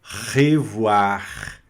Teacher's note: O R sempre na garganta. Revoar. É, no francês, você vai arranhar a garganta o tempo todo.